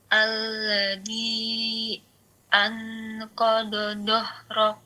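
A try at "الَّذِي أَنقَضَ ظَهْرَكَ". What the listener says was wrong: Dha-nya ya, bukan doh, tapi dha, sama seperti dha tadi. Ujung lidahnya taruh ujung gisri atas.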